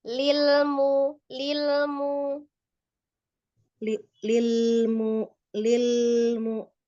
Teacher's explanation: jangan ditahan ya untuk lam sukunnya sama lamnya kayak biasa aja